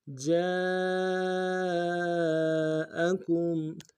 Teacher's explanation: جیم کے ساتھ الف مدہ ہے، الف مدہ کے اوپر مدہ اصلی ہے، کم سے کم 3 انداز میں کھینچیں گے